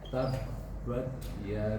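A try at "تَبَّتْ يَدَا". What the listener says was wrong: Belum keluar, harus ada desisnya. Tabbat bat.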